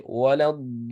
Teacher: So this is mad lazim. So whenever you're reading Surah Fatiha, ولا الضالين, ضالين, you have to make 6 vowel counts long.